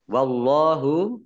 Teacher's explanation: yang dibaca tebal karena harokat di depannya fathah